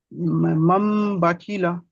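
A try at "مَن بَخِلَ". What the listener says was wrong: আরো একটু বেশি গণনা করেন। বাকিলা, বাকি টান হয়ে যাচ্ছে কেন? হারাকাত আছে না? বাকিলা।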